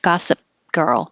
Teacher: You don't have to release the p. Hold it.